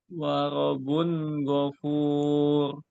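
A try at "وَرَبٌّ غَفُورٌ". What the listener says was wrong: Ada tasydidnya Pak di huruf ba-nya.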